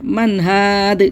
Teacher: نون ساکن کے بعد ہا آ رہا ہے حروف حلقی میں سے، تو یہاں پہ اظہار کر کے پڑھیں گے من ہاد، یہاں پہ من یہ من اس طرح نہیں کرنا ہے، منہاد اس طرح پڑھنا ہے، منہادن منہاد.